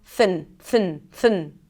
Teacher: And then 'nuh' - and N sound and a schwa - not an 'aa' sound, but just a really reduced sound - 'jaa-nuh'. And then 'th+n' - no vowel in the middle